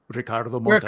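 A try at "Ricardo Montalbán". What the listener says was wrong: Ricardo, yeah, you have to roll the tongue. Don't do them wrong.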